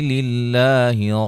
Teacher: لفظ اللہ کے لام کو باریک، اس سے پہلے زیر ہے